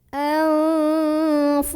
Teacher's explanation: Karena ada nun sukun ketemu sama huruf fa yang makhrajnya pertengahan, gak terlalu dekat dan gak terlalu jauh dari huruf nun. Maka cara membaca nun sukunnya ini adalah tidak lagi jelas n, melainkan samar-samar mau bilang fa ya. Sambil ada dengungnya. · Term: ikhfa